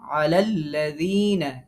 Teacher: আলা আমরা এখানে যেহেতু থামবো না, লাম পরের লামের সাথে মিল করব